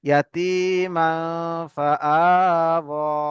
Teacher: খাড়া জাবার আলিফ মাদ্দার সমতুল্য, একে একালিফ পরিমাণ টান দিয়ে পড়তে হবে